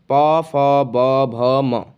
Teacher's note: ये सभी जो स्वर हैं होठों की सहायता से बोले जाते हैं, इसलिए इनको ओष्ठ्य स्वर, ओष्ठ्य व्यंजन भी कहा जाता है।